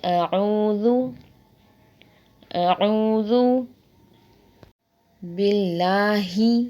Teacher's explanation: ذال کو بھی نرمی سے پڑھیں گے، نہ کہ زا پڑھیں گے۔ زا کو سختی سے پڑھا جاتا ہے اور ذال کو نرمی سے۔